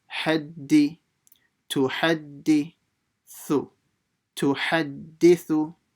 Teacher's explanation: So ta has a dhamma by itself, tu. Then the ha from the middle of the throat will join to the dal mushaddada